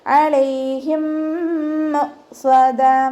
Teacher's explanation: ഇദാം ചെയ്യാണ് കേട്ടോ. മീം സാക്കിനയെ അടുത്ത മീമിലേക്ക് ലയിപ്പിച്ച് ഉണ്ണയോടുകൂടി ലയിപ്പിച്ചിട്ട് ഓതാ കേട്ടോ.